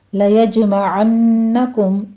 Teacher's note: لَيَجْمَعَنَّكُمْ میں جیم کے اوپر قلقلہ کرنا ہے. آگے نون مشدد ہے غنہ واجبہ کریں گے.